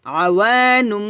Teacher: নুন দুই পেশ নুম হবে কারণ তানবিনের পর বা আসছে এটা হচ্ছে ইকলাব